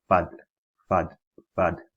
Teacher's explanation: pronounced using the inside of the lower lip and the tips of the two top front incisors